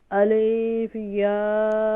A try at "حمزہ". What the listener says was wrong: الف نہیں ہوتی, جب بھی الف کے اوپر کوئی حرکت ہوتی ہے تو اسے حمزہ پڑھا جاتا ہے, تو یہاں پر حمزہ ہے.